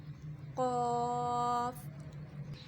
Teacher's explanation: حرف لہاویہ یہ لسانی مخرج ہے، اسے حرف لہاویہ بھی کہا جاتا ہے۔ قاف زبان کی جڑ اور تالو کے نرم حصے سے ادا ہوتے ہیں